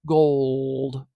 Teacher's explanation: a Veer l a dark L and that just means that the back of my tongue is kind of humped up bunched up and there's a little more darkness in my throat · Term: velar L, a dark L